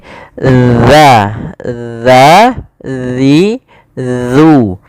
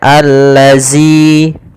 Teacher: huruf zal ini makhrajnya adalah ujung lidah kita, ujung lidah. Ya, kita ujung lidah bertemu dengan gigi sari atas.